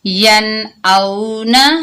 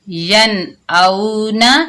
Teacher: نون ساکن کے بعد حروف حلقی یعنی حمزہ، ہا، عین، ہا، غین، خا میں سے حمزہ آ رہا ہے تو یہاں پر ہم غنہ کے بغیر پڑھیں گے